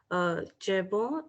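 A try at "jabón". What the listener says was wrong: pronouncing in French, kh sound. Khabon.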